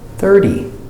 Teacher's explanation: The stress is on the first syllable, 30. And the pronunciation, D, D, D, D, D, 30.